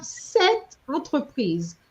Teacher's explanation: So I'm going to link cette with entreprise. I'm not going to say cette entreprise, because if I do that, people are going to understand set as being 7, right?